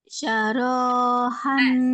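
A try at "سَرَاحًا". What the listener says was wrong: Sarohan, sa biasa.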